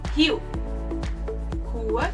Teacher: Letter R in Portuguese, when it's at the beginning of a word, sounds like the English H.